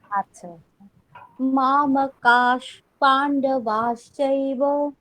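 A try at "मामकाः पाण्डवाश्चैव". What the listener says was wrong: হ্যাঁ ঠিক আছে।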